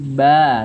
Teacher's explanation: wakaf maka kita tidak membacanya dengan ban tapi ba dengan dengan tanwinnya dihilangkan dan dipanjangkan dua harakat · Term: Mad iwad